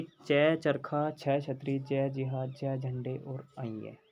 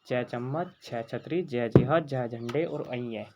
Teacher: वायु हमारे मुख से घर्षण करती है, इसलिए हम च वर्ग के सभी व्यंजनों को स्पर्श संघर्षी व्यंजन कहा जाता है